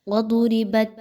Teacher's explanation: وَضُرِبَتْ، اب اس میں دیکھیں تو ضاد ہے اور خوب موٹا پڑھے جانے والا حرف ہے، حروف مستعلیہ میں سے ہے، خوب موٹا کر کے پڑھیے۔